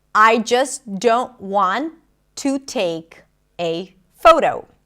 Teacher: she's not pronouncing the T in the word just, and that is okay, especially when you connect it to another word that starts with a consonant.